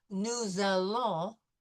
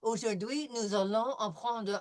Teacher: when we have nous followed by a vowel, nous allons, this S will become a Z sound